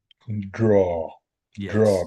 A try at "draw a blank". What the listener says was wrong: Yeah, yeah, that's it. That's sounding really good. Your draw sounds pretty good, actually.